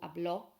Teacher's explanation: But then if we look at our preterite tense for he or she spoke in the past, you've got habló with an accent on the O. So the accent firstly changes how we pronounce the word, puts the stress on the end syllable